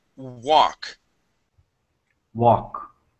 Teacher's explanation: The L is going to be silent here.